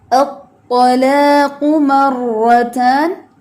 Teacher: الطا میں ایک تو ہمس نہ ہو، دوسرا اس میں واو نہ ہو. الطا نہیں پڑھنا اس کو، ٹھیک ہے.